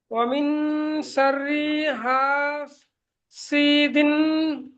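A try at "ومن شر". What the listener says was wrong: আপনার অমিন শাররি, রিটা একটু টান হয়ে যাচ্ছে, ওটা প্র্যাকটিস হলো, অমিন শাররি বলেন।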